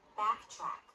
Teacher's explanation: On top, you can see the jaw drops more. For the unstressed A, the corners of the lips are a little more relaxed than in the stressed version